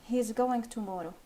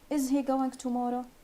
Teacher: the first one it has a falling intonation and the second one it has a rising intonation